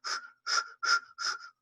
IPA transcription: f